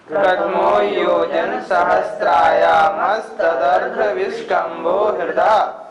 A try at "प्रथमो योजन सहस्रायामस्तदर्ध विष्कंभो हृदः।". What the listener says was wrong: उच्चारण फिर एक बार देखें। प्रथमो योजन सहस्राया, सहस्त्राया नहीं, सहस्रायामस्तदर्ध विष्कंभो हृदः।